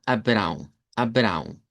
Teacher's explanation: El nombre de Abraham, que nosotros lo pronunciamos en español, en portugués sonaría a Abrão, Abrão, con A nasalizada y una W nasalizada